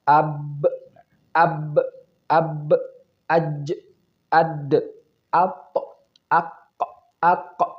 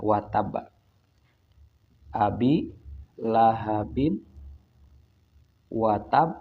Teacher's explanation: kita perlu menggunakan pantulannya tersebut dengan menambah tekanan, karena fungsi tasdid itu adalah menekan